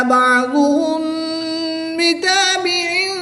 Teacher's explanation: میم ساکن کے بعد با آ جائے تو اخفاء شفوی ہوتا ہے، یہاں پر غنہ زمانی کر کے پڑھیں گے